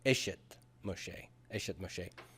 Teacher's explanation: the construct noun is unstressed. It surrenders its stress to the absolute noun, the second noun.